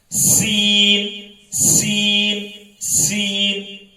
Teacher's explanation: سین باریک ہے لیکن اس میں سختی ہوتی ہے یعنی سیٹی کی آواز آتی ہے